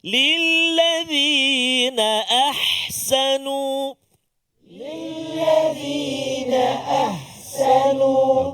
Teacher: Kalau ha tengah rongga kerongkong kita, yang tu kita nak.